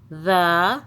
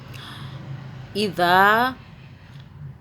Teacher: ہے، اس کو زال نہیں پڑھنا، اس کو ذال پڑھنا ہے۔ زبان کو تھوڑا سا باہر نکال کے اوپر والے دانتوں کو ٹچ کریں گے